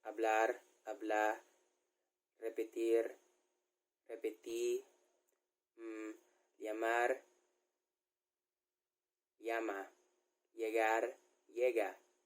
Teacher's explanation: A lot of R are being cut in Chabacano de Ciudad de Cavite